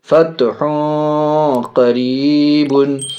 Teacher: ہا کے اوپر تنوین دو پیش، آگے قاف بڑی قاف حرف اخفا میں سے ناک میں آواز جائے گی.